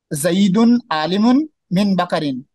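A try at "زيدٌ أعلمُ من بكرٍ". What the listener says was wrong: आलिम नहीं है, आलम। जईदुन आलम मिन बकरिन, जैद बकर से बड़ा आलिम है।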